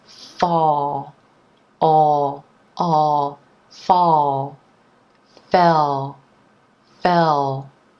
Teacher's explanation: tongue moves down and back to make the dark L sound